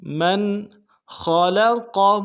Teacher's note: میم کو نون ساکن کے ساتھ ملانا ہے، نون ساکن میں اظہار ہوگا